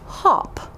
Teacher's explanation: the short o sound is pronounced ah as in hop